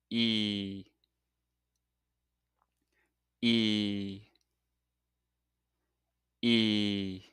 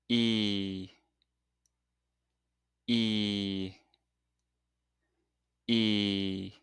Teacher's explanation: When you make this sound, your tongue is higher and further forward in your mouth and the lips are stretched